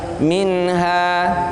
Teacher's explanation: Nun mati ketemu ha harus dibaca jelas.